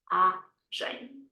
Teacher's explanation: It's a nasal sound at the end, but that doesn't mean we put the stress at the end